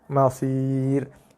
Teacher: So ra tu waqaf dibaca dengan nipis. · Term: ra nipis